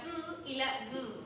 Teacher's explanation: los fonemas dentarios donde la lengua se acerca a los dientes superiores